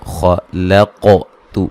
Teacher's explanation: یہاں خا اور قاف کو موٹا ادا کریں گے، قاف پہ قلقلہ کریں گے